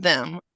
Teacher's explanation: TH, like in them, a voiced dental fricative.